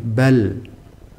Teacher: dibaca bainiah bainiah itu baina-baina moderasi yakni antara syidah dan rikhwah jadi syidah yo enggak tapi rikhwah yo enggak pertengahan bal bal